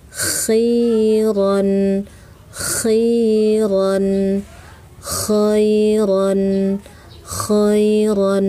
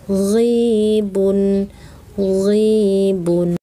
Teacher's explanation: Kedua ini sama nih, ujung tenggorokan atau tenggorokan paling atas. Ya, kho ada udara, gho tidak ada udara ya